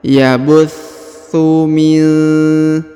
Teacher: Huruf tha ditahan dan ditekan, huruf thu ya, karena berharokat tasdid.